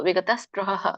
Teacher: ಋ ಒಳಗಡೆ ಗಂಟಲಿಂದನೆ ಕೇಳಿಸಬೇಕು